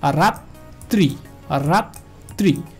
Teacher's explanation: এই তটা দুইবার উচ্চারিত হবে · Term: দ্বিতীয় উচ্চারণ